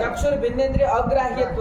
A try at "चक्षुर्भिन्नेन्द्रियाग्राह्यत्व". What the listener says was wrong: काहे अवसवर्ण दीर्घ लगाने में तुमको नानी मर जा